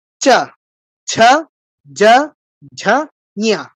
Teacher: ই, ই, চা, ছা, যা ঝা নিয়া কি হলো, জিহ্বাটা তালুতে স্পর্শ করছে, ঘষা দিয়ে নামছে। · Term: তালব্য বর্ণ